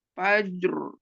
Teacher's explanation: Tinggal ro yang di akhir, ro tafkhim.